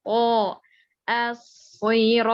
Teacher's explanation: to dinaikkan pangkal lidah, disempitkan mulut. To as-siratal, to tebel.